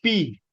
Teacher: bilabial consonant sounds are made by using both your lips